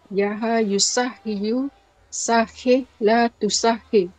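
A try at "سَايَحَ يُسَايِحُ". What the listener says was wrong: bukan. Itu ada ya-nya, Ibu. Sayaha yusayihu. Terbalik. yusahiyu, tapi yusayihu. Ibu tadi cakap yusah.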